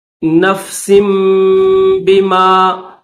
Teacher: کلو، کاف کو لام کے ساتھ ملائیں گے، کلو نفس، سین کے بعد با ہے تو اس وجہ سے سین کے بعد یہ چھوٹی سی میم بھی آپ کو دکھ رہی ہے، تو سین کے بعد فوراً میم کی آواز نکالیں گے، میم کے بعد پھر با کی آواز نکالی جائے گی۔